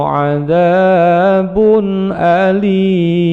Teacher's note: tanwin bertemu dengan alif atau Hamzah bacaan izhar halqi jelas ditenggorokan bacaannya pendek